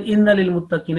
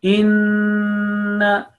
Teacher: pronounce meem and noon mushaddad, meem with the shadda sign and noon with the shadda sign, with nasal sound, with gunna, about 2 counts · It's not inna lil muttaqina, because noon with a shadda here, noon mushaddad, noon with a tashdeed, it requires 2 counts nasal sound. Inna, like that.